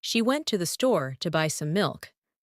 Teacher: The words went store, buy, and milk are stressed. The rest are spoken quickly and softly.